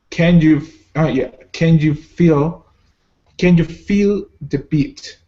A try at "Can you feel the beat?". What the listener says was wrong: Excellent. Very good.